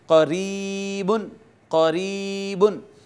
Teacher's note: اور آخری بات یہ ہے کہ یا اس وقت مدہ کہلوائے گی جب اس کا ما قبل مکسور ہوگا، زیر ہوگی یا کے نیچے، جیسے اب دیکھیں یہ یا آئی ہے اور یا کا ما قبل مکسور ہے، زیر آئی ہے یا سے پہلے، لہٰذا اس کو ہم کھینچ کے پڑھیں گے اور ہم اس کو کہیں گے قریبن، قریبن۔